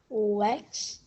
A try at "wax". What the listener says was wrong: Okay, you said Wex. Is that what you see? Do you remember what this says? So rather than Wex, what would it be?